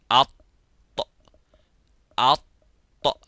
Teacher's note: Atbaqa shay'a ala shay means to bring a layer upon a layer, but this one is to bring the sides of the tongue, or the middle part of the tongue goes to the roof of the mouth, as well as the tip, which is called the ra's. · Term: itbaq